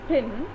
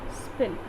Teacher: English speakers treat them as the same sound, but they are different. The first per, it is aspirated in pin. Okay, it is aspirated, and the second per sound as in spin, it is unaspirated. That means it is plain.